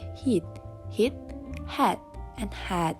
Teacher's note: The highest point of the tongue is in front of the mouth for the vowels in heat hit head